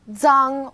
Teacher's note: its pronunciation is quite similar to the DS sound in English like cards but you need to move the tip of your tongue closer to the back of your teeth